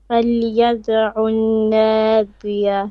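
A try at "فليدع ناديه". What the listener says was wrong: There's no shadda on the noon here. فليدعو نادية.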